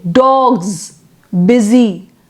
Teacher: is s then when we say dogs busy we have S but the sound is not s it is z